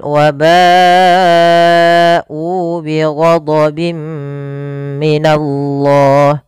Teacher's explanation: Maka konsepnya apabila ada mad tabi'i bertemu dengan hamzah pada satu kata, kita hukumi dengan bacaan mad wajib muttasil yang harus kita panjangkan sepanjang 4 harokat